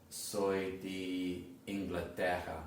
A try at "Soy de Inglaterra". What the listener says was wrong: no es di, no es la letra I, de